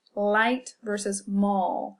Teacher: With mall, you're putting your tongue up the roof of your mouth towards the back. In Spanish, we don't have this L at all. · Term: dark L